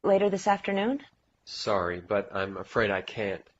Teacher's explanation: He only says can, right? He doesn't even use the T.